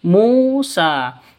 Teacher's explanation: mu panjang 2 ketukan karena ada waw mati diawali dengan dhammah atau waw mati sebelumnya dhammah. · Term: mad asli